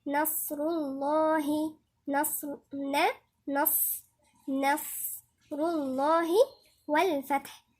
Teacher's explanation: النون مرققة والصاد مفخمة